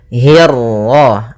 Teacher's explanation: Kemudian hi-nya tipis, kasrah bertemu ra yang tebal. Nah, di sini kita namakan dengan ra tafkhim.